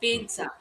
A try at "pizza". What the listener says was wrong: So there is a T sound. You can imagine the spelling to be as PEETZA.